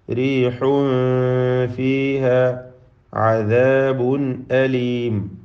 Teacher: അദാബുൻ എന്നതിലെ തൻവീൻ ഇൽഹാർ ഹൽഖിയാണ്, മണിക്കാതെ വെളിവാക്കുകയാണ് വേണ്ടത്